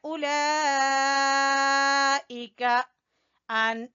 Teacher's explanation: यज़ुन्नु नून मुशद्दद का गुन्ना करेंगे। उलाइका मद वाजिब, ठीक है, उलाइका अन, तीन अलिफ के बराबर इसको खींचेंगे